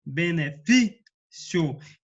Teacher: No caso, a penúltima sílaba acentuada. No caso, o fi, benefício. Então, ela é uma paroxítona, certo?